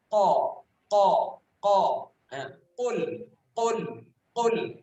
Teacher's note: Huruf qaf keluarnya di pangkal lidah